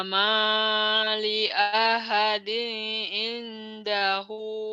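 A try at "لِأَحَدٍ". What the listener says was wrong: idhar, jangan li ahading.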